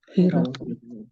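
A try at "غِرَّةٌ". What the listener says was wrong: Ghirrotun. Tapi pakai tasdid ya. Tasdid. Kalau nggak pakai tasdid, itu artinya semangat. Kalau pakai tasdid artinya tipuan. Di ro. Ghirrotun. Ghirro, iya.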